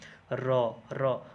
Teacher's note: आप बोल करके एक बार देखिए, आपका जीवा जो है ना वो कहीं ना कहीं र बोलने में फोल्ड हो रहा है। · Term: प्रकंपित वर्ण